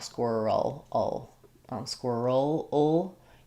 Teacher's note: The QUI says k, w, and and then we have the ul, that dark L, squirrel, ul.